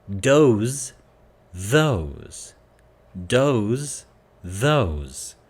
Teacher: Be aware that the S is a Z sound.